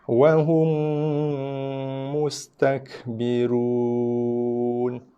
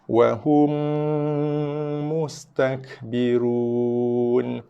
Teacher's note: Sorry, idgham syafawi berlaku kat sini. Mim jumpa mim. Di sini didengungkan, bibir dikejapkan, dikacip.